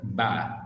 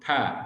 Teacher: अब दो फोनीम्स को ले लें, ठीक है, और वो जब हम उनकी प्रेजेंस और एब्सेंस हम डिस्टिंक्टिव फीचर के साथ जब हम उसको बयान करते हैं, तो एक हमारे पास मार्क्ड कहलाएगा और दूसरा हमारे पास अनमार्क्ड कहलाएगा. Just like ba is marked and pa is unmarked with respect to voicing